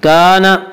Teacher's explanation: کانا الف مدہ، الف ہمیشہ مدہ ہوتا ہے، الف سے پہلے زبر ہوتا ہے، الف مدہ کو ایک الف کے برابر کھینچ کر پڑھیں گے